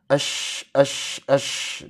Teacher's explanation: huruf shin dikeluarkan dari tengah lidah, diangkat mendekati langit-langit ya